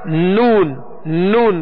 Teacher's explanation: تو یہ ناک سے جو آواز لوٹ رہی ہے یہ غنہ آنی ہے، یہ غنہ آنی کہلاتا ہے.